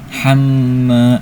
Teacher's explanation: Ham di sini ada gunnah, sebabnya karena ada mim bertasydid. Ketika mim bertasydid termasuk huruf gunnah, artinya cara bacanya itu gunnah itu artinya dengungan. Jadi didengungkan sebanyak dua harokat.